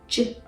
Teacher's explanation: J, on the other hand, is voiced because it does make your vocal cords vibrate. J. And you cannot make it long.